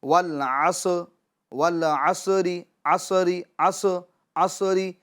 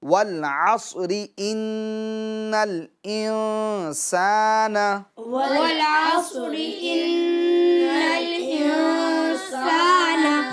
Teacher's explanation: मगर चूँकि साद ये हुरूफ कलकला में से नहीं है, लिहाजा इसकी आवाज़ को हम लौटाएंगे नहीं।